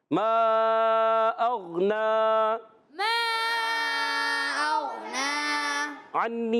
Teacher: मा अग़ना, अन्नी में आइन अदा होता है हलक के दरमियान वाले हिस्से। अच्छा, अग़ना में जो है याद रखें नून पर खड़ा ज़बर है, एक अलिफ खींचना भी, आपने ये भी याद रखना है।